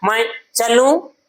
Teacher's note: लू पे जोर दिया जाता है। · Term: बलाघात